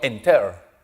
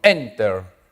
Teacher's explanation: Mayor fuerza de voz delante.